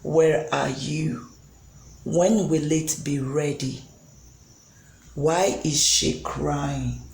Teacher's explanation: the pitch of the voice goes down okay it goes down a bit